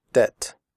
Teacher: in the word debt the bee is silent we do not say depth we say debt comfortable the word